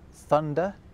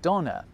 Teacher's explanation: where English developed a th sound in certain words German went off in a slightly different direction and ended up with a D sound instead